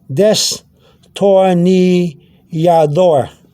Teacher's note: It's a D with a slight TH sound